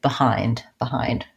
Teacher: the word behind behind so again we have a diphthong and the stress in this word is on the hind syllable